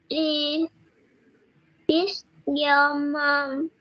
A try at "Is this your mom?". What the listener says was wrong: Con đọc chính xác rồi, nhưng con phải raising, con sẽ ở cuối câu thì con phải lên giọng. Con phải dần lên giọng, raising intonation, raising. Lên giọng ở cuối câu. Is this your mom?